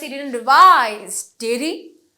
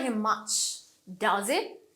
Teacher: So falling intonation যখন আমি tag question দেই।